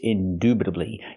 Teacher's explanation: Use the long oo sound like moon and soon.